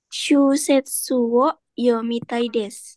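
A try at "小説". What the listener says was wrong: Hai, show ya, bukan shu. Show, show set. Hai, shosetsu novel. Shosetsu yomitai desu.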